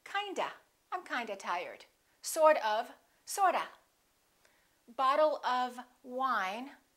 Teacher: look at what happens to of same thing it becomes ah instead of saying kind of you will hear people say kinda